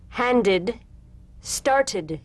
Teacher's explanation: The medial T becomes a soft D.